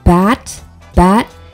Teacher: touch your throat when you say bat bat you should feel your vocal chords vibrating right at the ba sound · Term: voicing